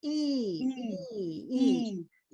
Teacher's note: heat so do everybody do e to themselves e e e this is your highest vowel